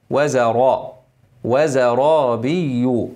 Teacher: انما الراء مفخمه مفخمه مفخمه